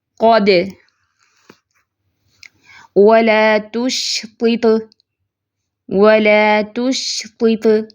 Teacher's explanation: ہم وقف کر رہے ہیں لیکن یہ صرف ساکن ہوگا, مشدد نہیں ہوگا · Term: قلقلہ کبریٰ